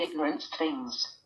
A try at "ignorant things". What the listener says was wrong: Ignorance things. Ignorant things. Way to pronounce the S in the ignorance. Ignorance.